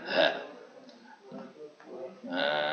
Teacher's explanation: Sebagai contoh, misal bertemunya huruf dal yang ada di ujung lidah dan ujung gigi jari dengan ha, misal ha yang ada di rongga tenggorokan paling dalam